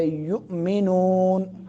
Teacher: جھٹکا لگا کے یؤمنون، حمزہ ساکن ہے